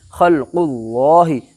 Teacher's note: اللہ کے لام سے پہلے پیش ہے اس لیے اللہ کا لام پر ہوگا